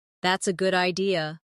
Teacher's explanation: notice how their voice rises at the end